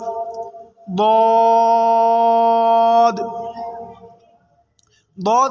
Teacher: बौद को ज़बान की करवट और ऊपर की दाढ़ों की जड़ से अदा करेंगे